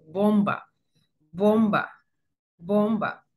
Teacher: se identificaba un poco por la liberación del aire repentina que hay en ella y una especie de explosión